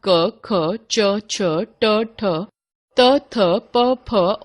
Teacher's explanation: जिन व्यंजन वर्णों के उच्चारण में केवल श्वास का प्रयोग होता है और स्वर तंत्री में कंपन नहीं होता, उन्हें अघोष व्यंजन कहते हैं।